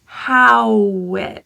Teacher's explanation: The W links to I, and this will sound like wit.